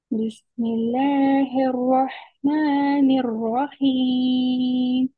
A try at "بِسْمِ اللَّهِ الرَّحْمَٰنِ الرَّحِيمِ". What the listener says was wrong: پہلے آپ کا جو لام مشدد اور رام مشدد ہے وہ اتنا اچھا نہیں تھا، سٹرونگلی مشدد جو ہے نا، بسم اللہ مل الرحمن الرحیم، یعنی کہ پتہ چلے کہ پہلے کے ساتھ ملا کر ہم پڑھ رہے ہیں مشدد، ٹھیک ہے؟